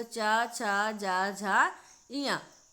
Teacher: किससे होता है, तालु से, क्योंकि यह इचु यशा नाम तालु सूत्र के अंतर्गत आ जाता है, इसलिए उसका उच्चारण स्थान तालु हो जाता है। छोटी ई, बड़ी ई, चा, छा, जा, झा, इया, या और शा का उच्चारण स्थान तालु है। ये जीभ हमारी तालु को टच करती है इन्हें बोलते वक्त।